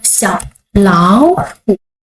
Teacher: We change the second word to the second tone.